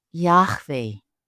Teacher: pronounce YHWH as Yahweh, with a silent H guttural sound in the middle and a W with a V sound